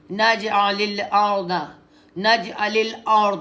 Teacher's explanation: را ار نہیں کرنا, اس کو ار نہیں ہونا چاہیے, را کی رے نہیں ہونی چاہیے